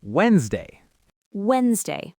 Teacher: In our syllable wens, the sound right before the S is N.